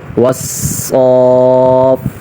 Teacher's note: صاد پر بھی ذرا ٹھہریں گے اور فا پر بھی، کیونکہ یہ دونوں مشدد ہیں